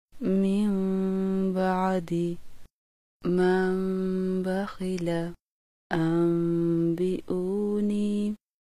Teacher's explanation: چھوٹی میم پر غنہ کرنے کا طریقہ۔ ہونٹوں کے اندرونی خشک حصوں کو آپس میں نہایت نرمی سے ملا کر آواز کو ناک کی جڑ سے ایک الف کی مقدار کے برابر جاری رکھ کر با کو ہونٹوں کی سختی سے ادا کیا جاتا ہے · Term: اقلاب